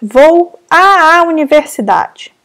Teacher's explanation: nós não precisamos pronunciar esses dois As, pronunciamos apenas um. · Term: crase